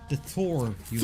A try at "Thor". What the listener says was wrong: Thor, you're really pronouncing that TH. The Thor.